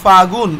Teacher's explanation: ল হারায় গেল, আত্মহত্যা করলো কোনো কারণ ছাড়াই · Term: অন্তর্হুতি